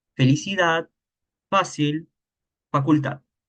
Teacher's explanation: La F usamos de dos dientes y el labio.